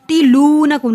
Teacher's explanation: زبر ہے، حروف مد ایک الف کے برابر لمبا ہوگا، تلونکم لو کو لمبا کیا کیونکہ حروف مد ہے